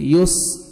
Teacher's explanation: سین کا ساؤنڈ آنا چاہیے سیٹی کے ساتھ